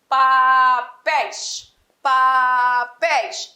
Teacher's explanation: A tônica está na última sílaba. Logo, esse vocábulo é oxítona.